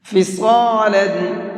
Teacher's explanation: صاد کو منہ بھر کے پڑھیں گے